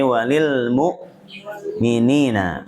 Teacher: mu'minin ini hamzah, ibu-ibu jangan sampai terjerumus ke dalam ain ya, bukan walil mu'minin tapi walil mu'minina, mininnya 2 harakat saja kalau nyambung.